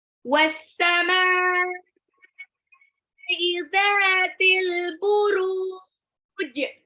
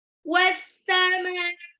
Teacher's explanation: As-sama itu alif lam samsyah, alif lamnya nggak dibaca.